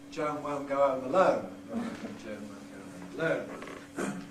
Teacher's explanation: the O, goat, and so on, is wider in London speech